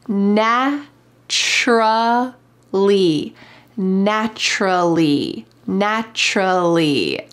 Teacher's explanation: there is a C, but listen to how it sounds. Naturally. It sounds like a CH.